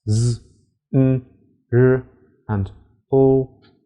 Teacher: English Dental sounds are F and [Music] um 4. alveolar sounds to make these the tip of the tongue touches the alveolar Ridge